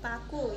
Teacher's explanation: Ciri-ciri mati oral bilabial plosif. Contoh kata paku.